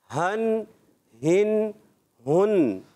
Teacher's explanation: ہا ادا ہوتا ہے حلق کے نیچے والے حصے سے